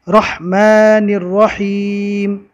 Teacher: دونوں رو کو پور پڑھا جاتا ہے اور ہا کو نکالتے وقت حلق پر زور دے کے نکالیں گے